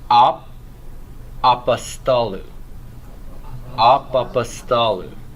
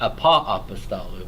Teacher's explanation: you're not going to pronounce the O anymore, the omicron.